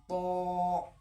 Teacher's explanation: جب طا بولیں گے تو ہم پورے منہ کو بھر کے بولیں گے